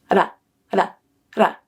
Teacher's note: The second way to make a T sound is called the flap, where the tip of your tongue flaps up to the roof of your mouth to make contact, and it sounds like a light D sound.